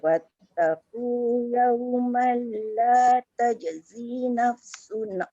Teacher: kemudian tajzi tu panjang 2 harakat